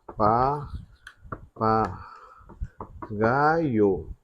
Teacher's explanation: que é a vogal e o i a semivogal vogal semivogal então aqui eu tenho um ditongo decrescente